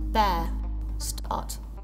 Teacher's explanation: In British English, mostly in the South, the R doesn't disappear totally without a trace. If you listen carefully, you'll notice that the length of the vowel actually increases. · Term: non-rhotic R